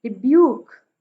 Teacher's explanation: ब्यूक पे stress है, यानी कि दूसरा सिलेबल जो है वो स्ट्रेस्ड है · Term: आयम्बिक मीटर